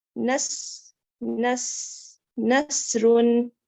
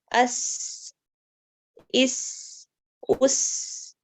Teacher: سین کی آواز کو دیکھیں، باریک اور سیٹی والی ہوتی ہے. اس میں سیٹی کی آواز نکلتی ہے لیکن باریک ہوتی ہے